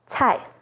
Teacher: C sounds like ts, as in cai